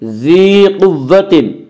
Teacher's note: یا مدہ کو ایک الف کے برابر کھینچ کر پڑھیں گے۔ ذی قوت، قاف کو پر پڑھیں گے، قاف حروف مستعلیہ میں سے ہے، حروف مستعلیہ 7 ہیں جن کا مجموعہ خصہ ضغط قز ہے جو ہمیشہ ہر حال میں پر پڑھی جاتے ہیں۔